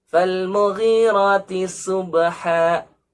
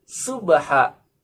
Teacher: kesalahan yang umum ketika membaca subha tidak dengan huruf shad tapi dibaca dengan huruf sin, ya. Fal mughirati subha, berbeda sekali artinya, ya.